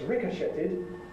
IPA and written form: ˈrɪkəʃətɪd (ricochetted)